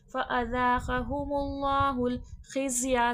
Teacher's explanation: ज़ा सख्ती सीटी के साथ पढ़ा जाएगा।